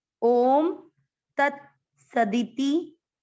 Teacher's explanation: स पूरा, दी छोटी मात्रा, ती छोटी मात्रा, दोनों को लंबा नहीं खींचना है।